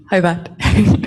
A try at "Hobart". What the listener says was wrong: Oh, Hobart? You don't say the T? Oh, Oh, you don't have time to say your T's?